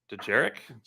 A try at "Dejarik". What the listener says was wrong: Jarik. The D is silent, like, like in Django.